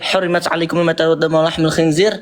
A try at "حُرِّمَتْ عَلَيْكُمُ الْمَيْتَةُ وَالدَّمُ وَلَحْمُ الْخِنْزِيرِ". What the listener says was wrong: jangan hurimat alaikum, itu kamu sedang menista Allahmu. Makhrajnya nggak jelas, tajwidnya nggak jelas.